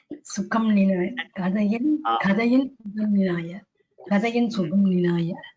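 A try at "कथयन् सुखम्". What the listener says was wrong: That Mahaprana should come as Mahaprana.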